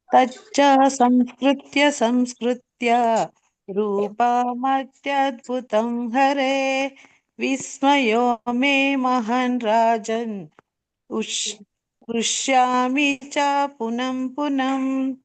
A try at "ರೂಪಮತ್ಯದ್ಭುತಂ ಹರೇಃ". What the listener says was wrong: ರೂಪಂ ಅತ್ಯದ್ಭುತಂ ಹರೇ ಹೇ ಬರ್ಲಿಲ್ಲ. ಹರೇ ಹೇ ಅಂತ ಹೇಳ್ಬೇಕು.